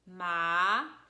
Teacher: the tone goes down and up. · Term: second tone